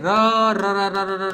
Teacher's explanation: ર ર બોલશો તો જીભની અંદર કંપન ઉત્પન્ન થતું હોય ને એવું લાગશે તો આ જે ર છે એને પ્રકંપી કહેવામાં આવે પ્રકંપી વ્યંજન